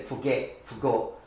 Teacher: in the cockney accent the t's not pronounced · So also, I have to say that in England it really depends on the accent, because again, RP always has the T pronounced, but for example in the Cockney accent, the T is not pronounced. So you do say forgot in a Cockney accent, so there is no T there, dropping of the T's, dropping of the H's, for example.